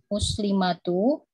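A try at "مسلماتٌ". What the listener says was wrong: Muslimat. Tun ya di sini karena tidak ada alif lam tanmin dia ya.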